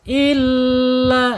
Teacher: Wa ininum depannya huruf alif illa ya illa penekanan di huruf lam ya yang bertasjid